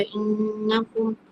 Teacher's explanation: नून के ऊपर तशदीद है, यहाँ पे जो है गुन्ना करके पढ़ा जाएगा,